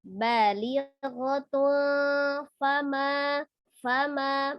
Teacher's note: tanwin bertemu dengan huruf fa ya. Ada tanwin bertemu dengan huruf fa dihukumi ikhfa, dibaca samar, disertai juga dengan gunnah